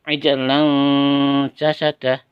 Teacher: tanwin bertemu dengan jim, yaitu samar-samar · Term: ikhfa